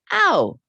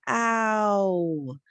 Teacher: the ow sound is an interesting sound because it slides in your mouth. It starts out in one position and moves. So it's a hard sound to identify because it's actually several sounds kind of just smashed together.